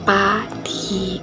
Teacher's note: Cara pembentukannya kedua bibir menutup rapat dan udara ditahan serta dilepaskan secara tiba-tiba. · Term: huruf P